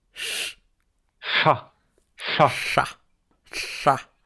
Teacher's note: il se prononce en posant le bout de la langue sur le palais, comme si tu allais prononcer un L. Et en fait, tu fais passer l'air sur les côtés de la langue. Chat. Chat.